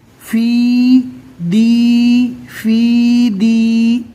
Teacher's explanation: دونوں جگہ پر یا مدہ ہوگا، ایک الف کے برابر کھینچ کر پڑھیں گے